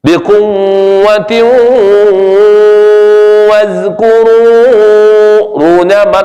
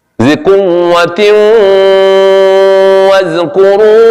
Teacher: Nah, dengungnya bukan di mulut tapi di hidung. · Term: idgham bi gunnah